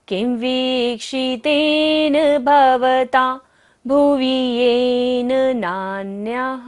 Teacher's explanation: विसर्ग है नान्यः पर, तो सारी सांस को हमें बाहर छोड़ना है, विसर्जन करना होगा।